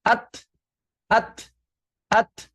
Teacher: ketika kita mengucapkan huruf-huruf yang sukun seperti ada letupan ya walaupun tidak keras